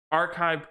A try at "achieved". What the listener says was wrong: Achieved. Achieved, Yeah, you said archived.